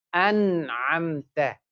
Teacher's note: After noon sakin, tanween, if any letter from huruf al-halaqi appears, which is ain, we do the izhar, we pronounce the noon.